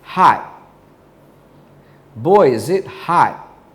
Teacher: our tongue will be in position to make the t sound but there'll be no air released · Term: held T